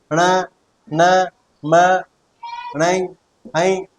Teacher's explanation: अगर आप नाक बंद करके इनका उच्चारण करोगे तो इनका शुद्ध रूप से उच्चारण नहीं कर पाओगे। तो इसी तरह से इनको नासिक व्यंजन कहते हैं।